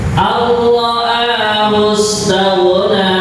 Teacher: Jadi kalau kalimat ar-ra'a ini namanya idgham bila gunnah ya. Jadi huruf nunnya seakan-akan tidak ada, langsung berbunyi kepada ra yang bertasydid.